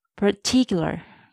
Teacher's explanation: Don't stress the first part, not particular. Do stress the second part, particular.